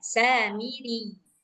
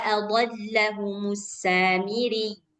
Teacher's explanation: Karena ianya bertasydid, jadi agak ditekan.